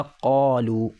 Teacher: اور قاف میں تھوڑی محنت کرنی پڑے گی اور حلق سے نکالنا پڑے گا